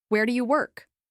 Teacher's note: With a rising pitch on work made the question sound less confident, almost hesitant. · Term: rising intonation